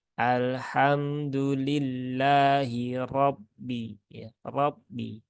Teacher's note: padahal memonyongkan bibir itu hanya untuk harakat domah ya sedangkan di sini harakatnya fathah maka tidak tepat ketika diucapkan dengan cara monyongkan bibir